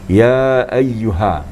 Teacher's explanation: Ha ini hanya menghampiri dada makhrajnya.